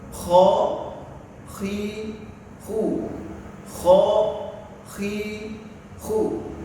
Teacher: akar lidah digesek dengan ujung tenggorokan yang paling luar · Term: huruf kho